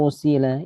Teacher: Idgham biguna. Dengung dua harokat dan lalu setelahnya yur tebal ro.